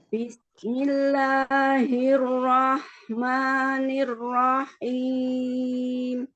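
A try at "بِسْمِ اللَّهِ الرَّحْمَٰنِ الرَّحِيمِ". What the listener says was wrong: Nirrahim, rohim, bukan nirrahim. Tidak ada tasydid pada ha.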